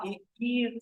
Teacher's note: The long vowel E is a unrounded front vowel. It is produced with the front part of the tongue.